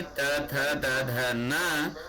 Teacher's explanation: त, थ, द, ध, न और स, इनका उच्चारण दंत मूल से होता है। दांत के पास, दांत की जड़ के पास हमारी जीभ सटती है, इसलिए इनको दंत्य वर्ण कहा जाता है।